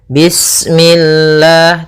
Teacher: Atau misalnya bismillah, nah, ini memantul. Kemudian lafal Allah ketika sebelumnya kasrah, maka dia dibaca dengan tipis, ya, dengan L.